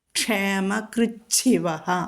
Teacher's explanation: കൃത്ത് എന്നാണ് അത് മാറി രണ്ട് ഛ വരുന്നു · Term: 2 ഛ